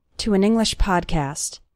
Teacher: You can see that the words to and English all flow together.